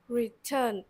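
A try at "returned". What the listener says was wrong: Âm đơ rõ ra. Ngọc bực cái âm cuối rõ ra cho chú.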